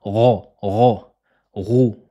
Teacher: Elle se prononce au début de la gorge. L'arrière de la langue va gonfler vers le fond du palais pour donner cette emphase. Et pour avoir une facilité, c'est comme si on prononçait la lettre R en français, comme dans le mot roux. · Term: la lettre roin